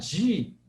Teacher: você percebeu que ele virou palatal a língua saiu dos dentes e foi para trás